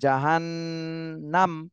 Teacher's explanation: হবে জবরের বামে খালি আলিফ মদের হরফ আজাবু জাহান্নাম আজাবু জাহান্ হরকতের বামে নুনে তাশদিদ এখানে ওয়াজিব গুন্না করতে হবে এই নুনে ওয়াজিব গুন্না করতে হবে জাহান্নাম আচ্ছা এখানে যেহেতু ওয়াকফের · হরকতের বামে নুনে তাসদিদ, এখানে ওয়াজিব গুন্না করতে হবে,